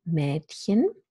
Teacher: finally, we have the half-open front vowel, Mädchen